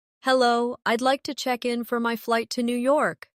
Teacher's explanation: Notice how check in sounds like one smooth unit. No pause in the middle.